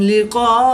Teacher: الف سے پہلے قاف پر زبر ہے تو الف مدہ کے بعد حمزہ اسی کلمے میں ہے تو مد متصل ہوگی، 3 سے 5 الف تک کھینچ کر پڑھیں گے